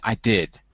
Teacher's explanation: And then I would say I did with a falling tone.